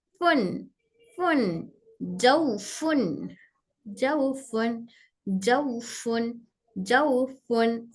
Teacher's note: फिर फा में मेरे ऊपर के दो दांत नीचे के होंठ की तरी को टच हो रहे